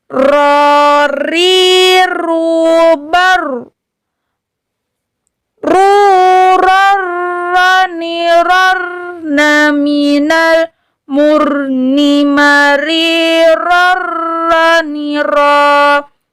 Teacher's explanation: huruf ro ini juga mesti tikror, mesti berulang